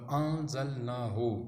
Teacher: اس کے بعد نون کے بعد زال آ رہا ہے، زال ان 15 حروف میں سے ہے، جب وہ آ جائے تو آپ نون کو جو ہے اخفا کریں گے، نون کو خفی کر کے پڑھیں گے، یعنی کہ نون کی آواز ظاہر نہیں ہوگی